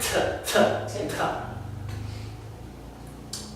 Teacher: Definitely gotta have that puff of air behind it.